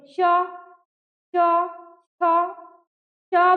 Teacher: ये जीभ कहाँ जाता है, दांत के नीचे, निचले हिस्से में टच होता है, स्पर्श होता है। बोलिए च च। ऊपर, अगर ऊपर जा रहा है तो यानी आपका उच्चारण क्या है, गलत है। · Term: तालव्य